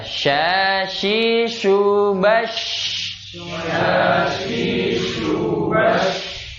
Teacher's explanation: menyebar udara atau angin di dalam mulut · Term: tafashinya